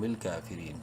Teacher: الف برابر لمبا کریں گے، فا زیر فی را یا زیری را کو بھی ایک الف برابر لمبا کریں گے یا مدہ کی وجہ سے، لیکن را کو باریک پڑھنا ہے زیر کی وجہ سے